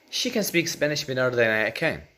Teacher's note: The first can is not even pronounced as can. It's pronounced as kin. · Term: weak forms